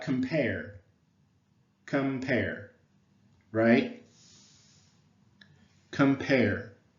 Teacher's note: I think that pair maybe is the stress syllable